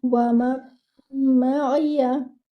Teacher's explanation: You will merge the noon sakina into the meme. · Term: idgham